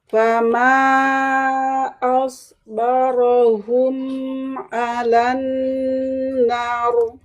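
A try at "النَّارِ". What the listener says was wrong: Nar, tebalkan. Nar.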